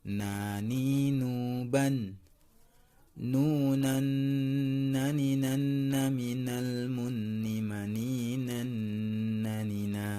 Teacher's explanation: Makhraj huruf nun atau na adalah ujung lidah mengenai gusi gigi seri atas.